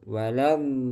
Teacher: ad jangan sampai dilepas. Ah, biarkan nempel terus.